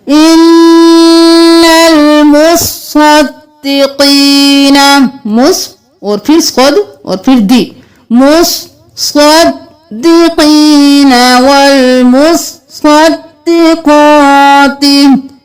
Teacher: सूरतुल हदीद की आयत नंबर 18, यहाँ पर बहुत से लोग मुसद्दिकीना मुसद्दिकाती पढ़ते हैं, लेकिन यहाँ पर सौत पर एक तशदीद छोड़ देते हैं, तो आपने सौत पर भी, सौत को भी 2 बार पढ़ना है, दाल को भी 2 बार पढ़ना है।